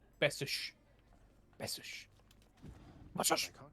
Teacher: The last S sound like a SH sound.